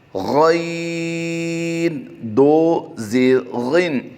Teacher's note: غین حروف مستعلیہ سے ہے، اس کی ادائیگی پر کریں گے